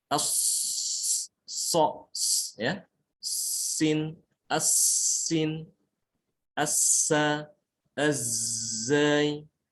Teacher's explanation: Nah ini huruf ini, 3 ini, hurufnya 3 ya, yaitu sod, sin, dan zai. Ini memiliki sifat sofir, suaranya tajam